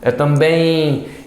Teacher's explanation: Então, assim, um ditongo. Bem, sobe no E, cai no I. Então, ele é decrescente. E ele é bem nasal.